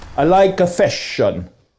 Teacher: Some consonants in Italian are always long. For example, the sound sh. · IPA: /ʃ/